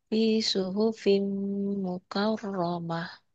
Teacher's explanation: Mimnya masuk ke mim ya, karena ada hukumhukum tanwin tuh. Idgham bigunah fi suhufim ditahan mimnya karena gunah.